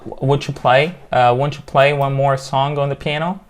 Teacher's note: في T وبعدها اليو بتبقى في ch sound هنا